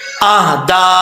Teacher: اس مد کو مد منفصل کہا جاتا ہے، اور 2 سے 2.5 الف کے برابر اس کو لمبا کیا جاتا ہے